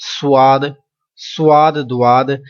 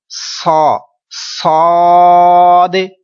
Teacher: یہ حروف مستعلیہ بھی ہے، لہذا اس کو موٹا پڑھ رہے ہیں